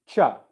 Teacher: when you make the ch sound, what you're doing is you're making a sh sound and a t sound. Okay, it's two sounds that become one sound, ch.